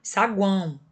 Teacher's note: Os tritongos, gente, eles podem ser nasais, como por exemplo, saguão, olha o tio, faz com que o som saia pelo nariz. Então, isso é um tritongo, que tem semivogal, vogal e semivogal, nasal, porque o som sai pelo nariz, olha o tio aqui.